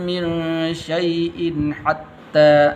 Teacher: یہاں پر غنہ نہیں کرنا کیونکہ آگے حا حروف حلقی میں سے